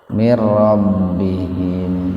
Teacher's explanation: Nun mati ketemu ro, jadi diidghamkan, dimasukkan ke ro tanpa mendengung. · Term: idgham bila guna